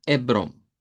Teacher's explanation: simplemente la e como que la h no está y esa o nasalizada